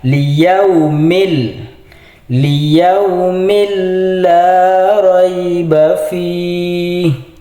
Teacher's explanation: Di sini yang warna merah ini adalah tanwin bertemu dengan lam, yaitu dibaca idgham bila gunnah. Cara membacanya tanwin di sini langsung dimasukkan ke lam. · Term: idgham bila ghunah